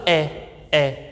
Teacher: अगर हमने बोला ए तो हमारे होठ जो हैं वो गोल ना होते, एकदम चपटे से हो जाते हैं, ए, ठीक है, पूरा मुंह खुल जाता है। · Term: अव्रतमुखी